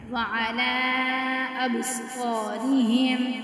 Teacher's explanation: اب با ساکنہ ہے تو یہاں پہ قلقلہ ہوگا کیونکہ یہ کتب جد میں سے ہے۔